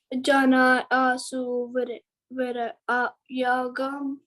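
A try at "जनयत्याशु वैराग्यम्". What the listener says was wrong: Janayatyashu. Tya. You can say Tya here. T and Y both are joined, right?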